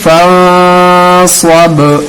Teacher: فَإِذَا فَرَغْتَ فَانصَبْ، یہاں پہ حروف قلقلہ میں سے با ہے، یہاں پہ قلقلہ کرنی ہے. قلقلہ کیسے کرتے ہیں؟ فَانصَبْ، آواز کو ٹکرانا ہے. یہ آیت ہے، رک جانا ہے.